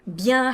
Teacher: bien has a nasal vowel in it so you don't want to pronounce that n